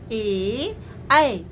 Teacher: ए, ऐ यानी ए और ऐ का उच्चारण स्थान क्या है? कंठ और तालु है।